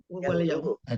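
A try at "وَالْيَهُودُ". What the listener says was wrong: Kenapa Yahudi? Yahudu lah.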